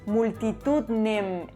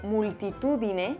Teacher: vemos que se ha perdido una vocal atona interior